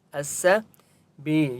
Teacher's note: یا مد ہے، با کو ایک الف کی مقدار کھینچ کر پڑھیں گے